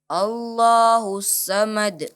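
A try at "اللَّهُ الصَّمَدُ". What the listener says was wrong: So, tebalkan lagi. Allahus samad.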